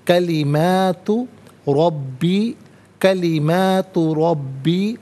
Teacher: ان تنفد کلمات ربی، کلمات ربی، ناظرین میم کھڑا زبر ما اور میم الف زبر ما دونوں طریقوں سے پڑھنا درست ہے، را پر زبر، را کو پر کر کے پڑھیں گے، با مشدد جمع کے ساتھ پڑھا جائے گا۔